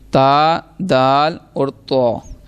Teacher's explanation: زبان کی نوک اور اوپر کے دانتوں کی جڑ سے یہ ادا ہوں گے